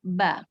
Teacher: Huruf ba itu dia mempunyai sifat jahar. Karena dia tidak keluar napas. Ba, kuat. Siddah.